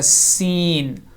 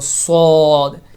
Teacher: سین کو باریک پڑھا جاتا ہے، صاد کو موٹا پڑھا جاتا ہے، اور ان دونوں میں وسل ساؤنڈ، سیٹی کی ساؤنڈ پیدا ہوگی۔